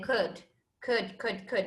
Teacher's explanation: en la primera palabra de could desaparece la l